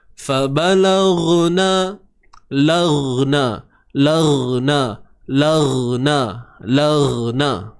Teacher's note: Huruf ghain, okey, bersifat rakhawah, iaitu suara yang terlepas. Okey, suara yang mengalir.